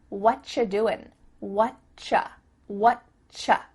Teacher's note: we've cut out completely the word are, and the word you just becomes cha.